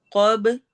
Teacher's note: با پہ قلقلہ ہوگا، قوف کو ہیوی پڑھنا ہے